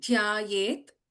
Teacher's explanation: ध is a महाप्राणक्षरा